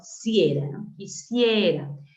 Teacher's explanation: encontramos una vocal cerrada I y una vocal abierta e y el acento recae en la abierta